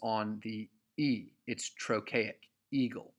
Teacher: the emphasis is on the E. It's trochaic